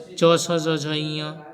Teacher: च वर्ग हैं तालव्य हैं, तालु का स्पर्श करते हैं।